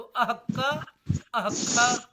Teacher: कखाभ्याम प्रागर्ध विसर्ग सदृशौ एते जिह्वा मूलीय उपपद्मानीयौ द्वौ